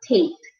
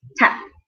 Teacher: So now that T-A-P-E is quite long, tape, as opposed to tap just now. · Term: long vowel sound